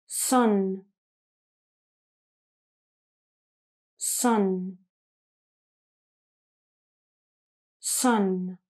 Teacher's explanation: These are two nasal sounds, so you're going to use your nose a little bit more. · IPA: /n/